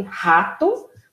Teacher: o R, que é o que sai da garganta